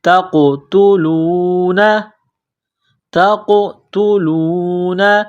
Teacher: کو باریک کرنا ہے، تا کو قاف کے ساتھ ملائیں گے، قاف کو موٹا کرنا ہے، قاف کے اوپر قلقلہ کریں گے